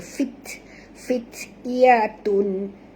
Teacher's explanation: huruf ta di sini bila dia mati tuan puan, kita kena bunyikan hammahnya fit.